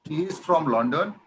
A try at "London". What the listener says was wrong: লন্ডন না, লন্ডন, লন্ডন, একটু আকার আকার উচ্চারণ হয়, লন্ডন।